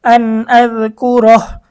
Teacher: হবে আন আজ কাফ পেশ কু র জবর র কু র রটা মোটা কারণ রয়ের উপরে জবর